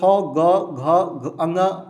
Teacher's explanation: इनका उच्चारण स्थान कंठ से होता है।